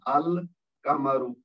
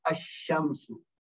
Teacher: قمری حروف میں لام بولا جاتا ہے، شمسی حروف میں نہیں بولا